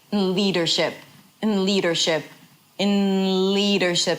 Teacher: So you go from the N to the L, you connect them · So in is really, really short and reduced. It feels like it's part of the word leadership.